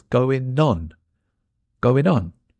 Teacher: we drop the G too so it's n joining on